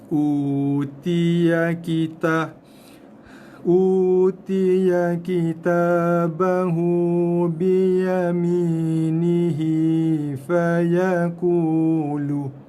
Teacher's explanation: Jaga ya ni biasa lajak. Terlajak harakat. Ya ni satu harakat aja.